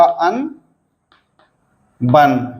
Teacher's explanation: अ पर बलाघात आएगा